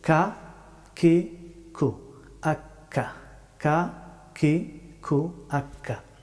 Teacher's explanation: কাফ হরফটি উচ্চারিত হয় জিহ্বার শেষের অংশ থেকে, তবে একটু সামনের দিকে আগ বাড়িয়ে কাফ হরফটি উচ্চারিত হয়।